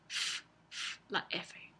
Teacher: Los dientes superiores tocan los labios inferiores. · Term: labio dental